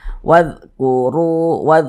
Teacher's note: huruf ra memiliki tanda baca dhammah, maka dibaca tebal, dibaca tafkhim, sehingga pangkal lisan kita itu naik terangkat ke atas ketika kita mengucapkannya. Huruf ra-nya kita tebalkan, wadhkuru, begitu kita tebalkan.